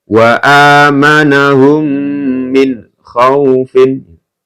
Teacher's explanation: sukun bertemu dengan mim ya mim sukun bertemu dengan mim maka dibaca mendengung ya dan ditahan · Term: idgham mimi